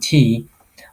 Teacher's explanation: It's a voiceless sound, right? And it's the alveolar sound, okay? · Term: t sound